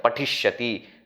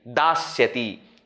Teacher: So pati plus sya, because pati is ending with e, sya changes to sha. Basically, sa changes to sha.